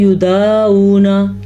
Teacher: عین اگر آپ درست نہیں پڑھیں گے تو وہ حمزہ بن جائے گا یا پھر وہ الف مدہ بن جائے گا۔ یعنی بعض لوگ پڑھتے ہیں یدعونا، یہ تو الف مدہ بن گیا، اور بعض لوگ پڑھتے ہیں یدعونا تو یہ حمزہ بن گیا۔